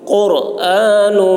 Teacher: قاف کی آواز موٹی ہوگی اور را پر ہوگی